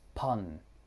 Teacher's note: We might hear it said as pun, removing the s. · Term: consonant deletion